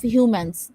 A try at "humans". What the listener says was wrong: এস আছে হিউম্যানস